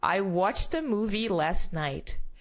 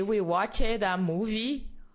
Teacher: you're gonna connect the T sound with ah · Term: linking sound